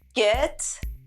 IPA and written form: ɡet (get)